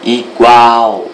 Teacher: Você fica mais tempo falando a última sílaba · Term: oxítona